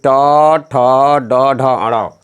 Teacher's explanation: टू अर्थात टवर्ग यानी ट ठ ड ढ अण। र और मूर्धनी स का उच्चारण स्थान मूर्धा है। मूर्धा से बोलने के कारण ही इसे मूर्धन्य कहते हैं।